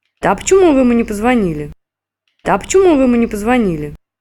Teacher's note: while the question word remains accented, a second downstepped fall can be realized on the phrase final word